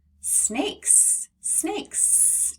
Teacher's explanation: when I make ckk which means it's unvoiced which is why when we say snakes we make the S sound because it's following that unvoiced c